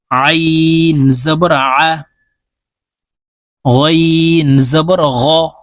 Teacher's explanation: আইন হরফ হালুকের মধ্যখান থেকে চাপ দিয়ে উচ্চারণ করতে হবে কারণ আইনের মাখরাজ হালুকের মধ্যখান থেকে হবে আইন জবর আইন ফা